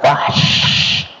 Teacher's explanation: syin itu makhrajnya dari tengah lidah hampir rapat ke langit-langit